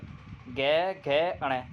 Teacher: घोष जिनके उच्चारण में स्वर तंत्र कंपन करता है, यानी कि बोलते टाइम कंपन पैदा होता है, उन्हें हम सघोष या घोष वर्ण कहते हैं।